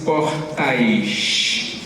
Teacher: Um carioca diz portais. Como ditongo.